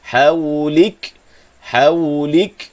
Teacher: Waqaf saja pada huruf kaf, maka hujung sebutan kaf yang sukun tadi akan ada hamas ataupun angin yang dilepaskan, sedikit nafas yang dilepaskan. Hawlik Haulik, jangan putus suara tanpa ada nafas yang dilepaskan.